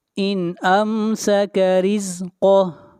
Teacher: ان امسک رزقہ، ان امسک رزقہ، یہاں پر را کو باریک پڑھیں گے، را کے نیچے زیر ہے۔ قاف کو موٹا پڑھیں گے، قاف حروف مستعلیہ میں سے ہے، اور جب یہاں پر سٹاپ کریں گے تو ہا کے اوپر سے حرکت گر جائے گی، اور ہا کو ساکن کر دیں گے۔